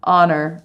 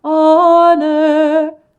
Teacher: It is that upside down E sound. It's the schwa